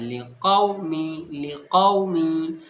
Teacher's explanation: جب واو کے اوپر جزم ہو اور اس سے پہلے والے حرف کے اوپر زبر ہو تو واولین ہوگا، یعنی واو نرم آواز کے ساتھ جلدی پڑھا جائے گا۔ تو یہاں پر واو کو نرم آواز کے ساتھ میں ہمیں جلدی پڑھنا ہے